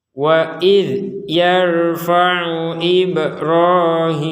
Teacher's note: bahwa dzal sukun ini jangan sampai dipantulkan. Ataupun kalau kita tidak niat memantulkan, tapi ada suara di sukunnya dzal ini, maka itu juga tidak boleh.